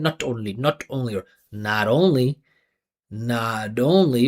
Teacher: The vibration continues. T turns into D. And I go back into the next vowel. Not only like that sounds more clear, sounds more natural. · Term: flap T